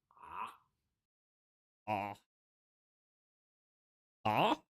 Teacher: The sound of an Ain is a voiced constriction of the throat.